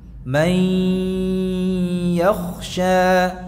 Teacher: Dalam hal ini yang kita memasukkan nun sukun pada huruf ya-nya disertai dengan suara dengung. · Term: Idgham bi gunnah